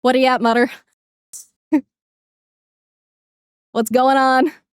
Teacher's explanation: But one thing that's very noticeable with like Newfanland accents is a lot of the time with uh th sounds will kind of turn it into like a d sound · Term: Newfoundland accents